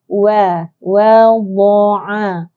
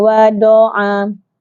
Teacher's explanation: sisi lidah kiri ataupun kanan diangkat dan ditekan di geraham, gigi geraham atas sebelah dalam